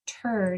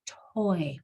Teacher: your mouth has to go from the T straight to the oi